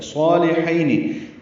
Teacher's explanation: یہاں پہ صاد پر الف مدہ ہے، لام باریک ہے